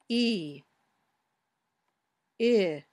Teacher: the muscles in your tongue are a little tenser or tighter when you say e